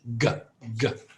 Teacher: when I make a G it's voiced there's vibration